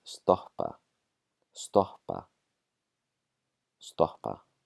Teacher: a double P causes pre-aspiration. So it's going to be a breathing out before the Ps. And this is whenever we see two Ps written next to each other.